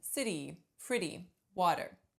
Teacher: the flap is the sound that you hear in City pretty water